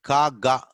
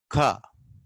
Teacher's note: Then ka, ga, velar. Velar means soft palate. At the place of soft palate, you stop. Ka with the help of your tongue.